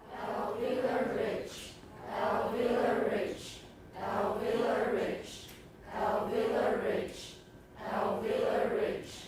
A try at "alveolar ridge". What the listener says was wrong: Make sure you're voicing it. Don't say alveolar rich. Alveolar ridge. Once more, ridge. Alveolar ridge.